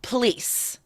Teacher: That O, that first vowel, O, disappears, right?